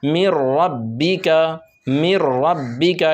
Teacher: میم کو را میں ملائیں گے اور بغیر غنہ کے ساتھ پڑھیں گے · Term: ادغام